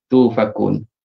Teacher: Hamzah yang mati tu tukarkan jadi waw. Waw mat. Tufakun.